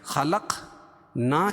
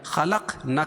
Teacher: الف سے پہلے زبر ہو تو الف مدہ ہوتا، اس کو ایک الف کے برابر کھینچ کے پڑھیں گے